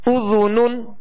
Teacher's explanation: ذال کو نرمے کے ساتھ ادا کریں گے، اس میں سیٹی کی آواز پیدا نہ ہو